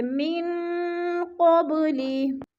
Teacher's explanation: نون ساکن کے بعد قوف حروف اخفا میں سے ہے تو ادھر اخفا کریں گے، آواز کو ناک میں چھپا کر پڑھیں گے